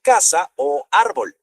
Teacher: el golpe de voz va en la penúltima sílaba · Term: graves